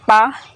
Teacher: पा जब आप कहेंगे तो ओष्ठ ही आपके टच होते हैं